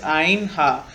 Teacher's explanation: These two letters are pronounced from the middle part of larynx.